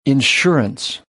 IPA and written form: ɪnˈʃɜ.r. (Insurance)